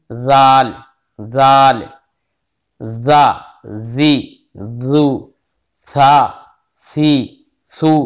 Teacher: बिल्कुल सीटी नहीं होना चाहिए सा और जाल में